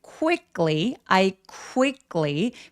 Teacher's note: 쿠위라고 입술을 쭉 내밀어서 발음해 주시는게 포인트예요